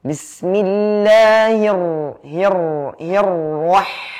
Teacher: dan ra itu mempunyai sifat takrir bergetar